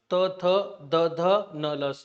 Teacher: जिभेचा स्पर्श आपल्या दाताच्या मागील बाजूला होतो · ओके, याचा उच्चार करताना त थ, आपली जी जीभ आहे, आपली जीभ ते आपल्या दातांना स्पर्श करते ह्या वर्णांचा उच्चार करताना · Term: दंत्य वर्ण